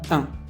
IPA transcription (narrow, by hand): ɛ̃